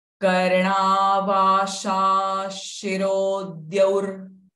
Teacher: Visarga followed by sh syllable. Visarga sound will become sh.